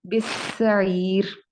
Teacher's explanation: बिस्सईर, बिस्सईर, और सीन को लंबा नहीं खींचेंगे। और ये जो आखिर में रॉ है इसको हम पुर नहीं करेंगे, क्योंकि इससे पहले आप देख सकते हैं या मौजूद है।